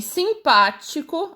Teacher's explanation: se a sílaba tônica é a antepenúltima, como em simpático, a sílaba mais forte aí é o pá, a palavra é proparoxítona.